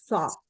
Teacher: Nah, di sini ada temennya ada sin ya. Sa kalau pangkal lidah dinaikkan menjadi so.